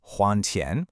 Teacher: The sentence uses huan tian with that rising tone, which means to repay a debt